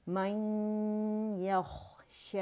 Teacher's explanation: نون ساکن جو ہے کہ آواز وہ یا کے اندر چلی جاتی ہے 95%, لیکن ادغام ناقص ہوگا کیونکہ غنہ باہر رہ جاتا ہے. نقص کی وجہ یہی ہے, ادھورا. · ٹھیک ہے, تو اس کو ہم شو کریں گے غنّے کی آواز کے ساتھ. ٹھیک ہے, جو پہلا یا ساکن ہے اس پہ غنّہ کریں گے اور جو دوسرا یا متحرک ہے اس کو اپنی آواز کے ساتھ ادا کیا جائے گا